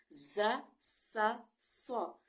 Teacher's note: ज़ुबान की नोक नीचे वाले दांतों के मसूड़ों से लगेगी